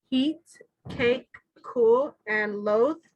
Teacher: in every case in set b the tongue is kind of pointed and it's harder when we produce those sounds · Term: tense gesture